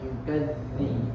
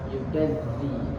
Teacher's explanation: makhrajnya terletak pada ujung lidah di antara dua gigi